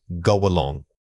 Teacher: This link is very common and involves letting a slight glide of air connect the two words.